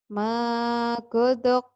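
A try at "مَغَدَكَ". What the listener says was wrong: Magodoko. Magodo. Godako. Ya, jangan salah O-nya. Magodako.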